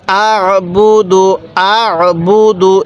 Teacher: আইনটা উচ্চারণের সময় গলার মধ্যে একটু চাপ দিলে আইনটা সহি উচ্চারণ হয় এরপরে হামজা লাগবে এই আইনের সাথে বা পেশ বু দাল পেশ